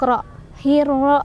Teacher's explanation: Sebabnya karena ada alif lam bertemu dengan huruf syamsiyah yaitu ra. Cara bacanya alif lamnya tidak dibaca, melainkan kita langsung masukkan ke huruf yang setelah lamnya yaitu ra sambil ditekan ya. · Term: idgham syamsiyah